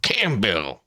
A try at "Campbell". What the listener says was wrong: With no P, not Campbell. Can't like Campbell is Cambel.